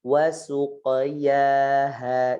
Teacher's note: suq tetap ditebalkan qafnya, su-nya ditarik